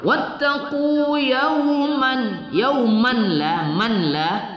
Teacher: tanwin bertemu lam idgham bila gunnah kita idghamkan. Wattaqu yauman la man la tidak kita dengungkan idgham bila gunnah.